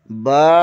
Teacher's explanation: الف، منہ کے خالی حصے سے ادا ہوتا ہے۔ با، بند ہونٹوں کے گیلے حصے سے ادا ہوتا ہے